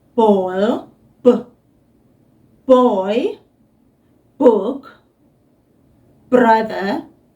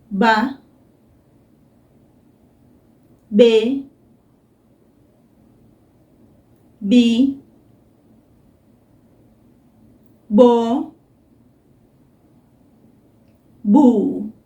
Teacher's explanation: Don't blow it out like you would when you say the word ball, b, boy, book, brother. We don't want that b, that blowing out kind of sound. We want that softer sound, just b.